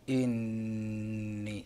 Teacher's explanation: النون إذا وقعت مشددة تغن في جميع حالاتها وصلا ووقفا بمقدار حركتين